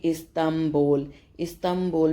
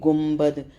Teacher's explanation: استنبول میں اگر ہم لکھتے ہیں تو نون ساکن کے نون کے بعد با آتا ہے، پڑھنے میں وہ میم کا ساؤنڈ دیتا ہے۔ جیسے کہ گنبد، اب گاف نون با ہوتا ہے، لیکن گنبد کر کے ہم اس میں نون کی جگہ میم کو پڑھتے ہیں۔ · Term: اقلاب